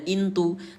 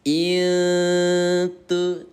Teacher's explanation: Kalau dibaca jelas bacanya intu, tapi kalau disamarkan 2 ketukan menjadi itu.